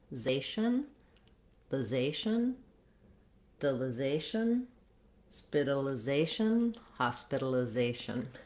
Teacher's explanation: In hospitalization, the zay is the main stress syllable. Words that end with ation, ation, are pretty much always stressed on that a, that second to last syllable.